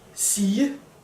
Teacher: Then we have the soft G, as I call it. This is usually a G trapped in between 2 vowels. And the G sound then becomes a J sound. For example, in the word sige, to say, the G becomes a J sound.